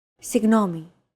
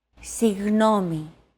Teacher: this character isn't pronounced using an English G sound at all it's like a very soft continuous and loosely held G almost as if you're gargling but don't make it sound too throaty